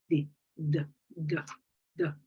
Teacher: In the case of the D, it's voiced, it's alveolar